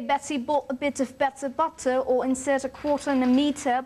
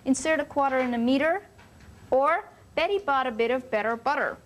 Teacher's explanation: Remember the first day I told you that the Americans flap the t sound? It sounds like an almost d sound. And not keep it crisp and clear like the British.